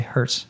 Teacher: Even you could have the T be a bit silent and hurts. So instead of saying a strong hurts, you could say hurts. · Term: American T